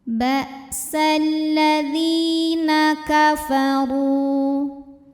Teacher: huruf dha dibunyikan secara tafkhim karena barisnya dhammah, maka cara bacanya tebal, pangkal lidah naikkan